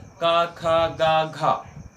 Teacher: जो घा है वो महाप्राण है और जो खा है वो महाप्राण है